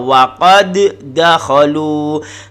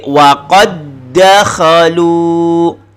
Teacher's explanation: tidak ada dengung, tidak ada qalqalah, yang ada hanya sabdu, hanya ditahan sekejap. Waqad dakhalu, ditekan. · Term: idgham mutamathilain